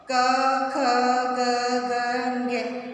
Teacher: कंठ से उच्चारित हो रहे हैं। आपको लग रहा होगा कि हमारे कंठ से ये बोला जा रहा है।